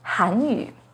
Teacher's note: The pinyin and tone for 韩语 has a second rising tone on 韩